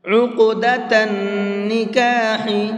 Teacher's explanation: قاف کو پر کر کے بھی پڑھیں گے اور ساتھ ساتھ اس کے اندر قلقلہ بھی کریں گے · اب دیکھیے ان 5 حرفوں میں سے قاف بھی ہے اور قاف ساکن بھی ہے، تو اس قاف کے اندر قلقلہ کریں گے۔ قلقلہ کہتے ہیں ہلکا سا آواز کو ڈبل کر کے پڑھیں گے